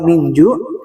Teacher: posisi lidah ketika itu sudah persiapan ke huruf jim. Makanya suaranya kayak jim tapi samar-samar. Nah, itulah bacaan ikhfa hakiki.